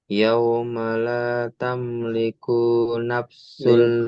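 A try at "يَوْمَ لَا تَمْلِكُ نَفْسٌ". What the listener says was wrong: Liku nafs, jangan suka, jangan masih dijeda-jeda ya. Kalau tak ada panjang, jangan dijeda.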